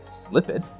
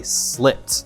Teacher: No vibration. It has a final unvoiced sound